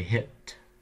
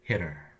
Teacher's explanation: There's actually a break in the air hit there's a catch in the throat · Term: pre glottalized